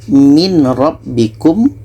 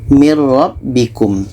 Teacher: ini idgham bilaghunnah bunyi nun kita masukkan ke ro